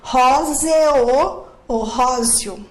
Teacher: O E tem som de I. Então, eu tenho um ditongo crescente aqui.